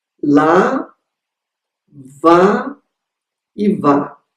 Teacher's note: é um átono, ele é um pouquinho mais fechado do que o A que aparece na segunda sílaba, que está na sílaba de intensidade.